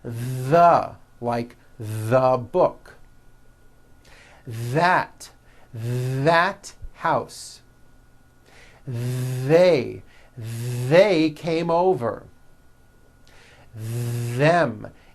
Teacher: just showed you and just add voicing that's the voiced th you should be able to feel a strong vibration in your throat and on your tongue